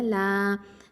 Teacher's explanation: லாம் வந்து ஹாஃபத்துல் லிசான், அதாவது நாவின் ஓரப்பகுதி எழுத்து. அதாவது இதில் கல்லா அலிஃப் மத்து இருக்கிறதுனால 2 ஹரக்கத்தை நீட்டி ஓதுவோம்.